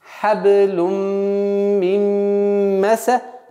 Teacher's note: правило идгам камиль, полноценный идгам с полноценным назализацией, с полноценным ассимиляцией